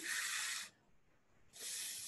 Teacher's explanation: F and V are voiceless and voiced labiodental fricatives